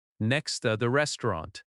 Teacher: Next to often reduces to nexta. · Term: reductions